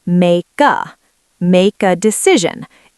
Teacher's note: We link the K to the A.